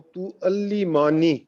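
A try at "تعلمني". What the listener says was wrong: ابھی تک بھی آپ ماں نہیں کہہ رہے ہیں، ماں کو لمبا نہیں کرنا ہے.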